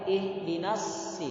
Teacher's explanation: Ihdinas shi, tidak boleh. Huruf shad ketika berada pada posisi kasroh, ada tanda kasroh, maka tebalnya jangan terlalu berlebihan. Tetap huruf shad tapi tidak berlebihan.